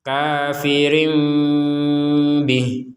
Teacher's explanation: di sini Har kasrah kemudian ada huruf ya kecil di atasnya menandakan harakat kasrah ini dipanjangkan dua harakat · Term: panjang dua harakat